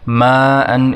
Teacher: ماء، اس کی مد کو بھی 5 سیکنڈ تک کھینچیں گے